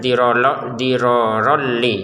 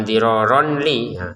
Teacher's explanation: Ronnya bertemu lam kita masukin tanpa dengungan